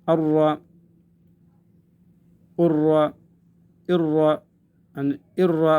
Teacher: را سے پہلے حمزہ کے نیچے زیر ہونے کے باوجود یہ پر ادا ہوگا